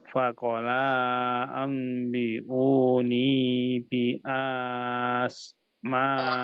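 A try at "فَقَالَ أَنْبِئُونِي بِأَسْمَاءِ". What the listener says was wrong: Hanya tidak usah panjang Pak, hanya di sini pendek aja. Bi asma, nanti panjangnya di ma ya.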